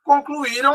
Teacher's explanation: Concluíram, a mais forte é o I, também é a penúltima